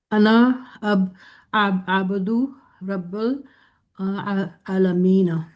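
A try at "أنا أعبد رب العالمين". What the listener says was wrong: اعبدو رب العالمین، قرآن پڑھا ہوا ہے نا آپ نے؟ انا بھی، انا کو لمبا نہیں کرنا. انا اعبدو رب العالمین.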